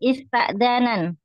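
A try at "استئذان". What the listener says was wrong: Dikasrakan huruf ketiga om. Ista jadi isti. Istidzan. Seperti istighfara. Istakhraja.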